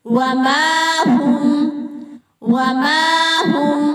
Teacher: ماں کو ایک حرکت کے برابر کھینچیں گے